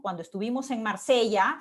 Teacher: este primer grupo, digamos, dentro de esta oración compleja, acaba en un tonema ascendente